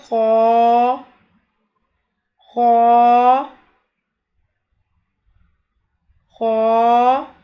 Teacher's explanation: اس بات کا خیال رکھیں کہ خو کی ادائیگی میں خرخراہٹ پیدا نہ ہو، پھر یہ غلط ہو جائے گا۔